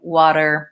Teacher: you are pronouncing the T in water and Americans don't do it that way they use a flap T sounds more like water it sounds more like a D so